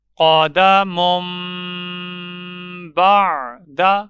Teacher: تو تنوین کے پڑھنے میں جو نون آتا ہے اس کی جگہ چھوٹا میم پڑھا جائے گا